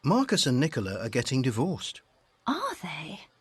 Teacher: it should go up and it should go down to show that you're interested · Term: intonation